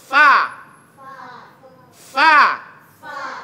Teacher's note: Jadi rumusnya gigi bahagian atas, ujung gigi bahagian atas ketemu dengan perut bibir bawah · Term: huruf fa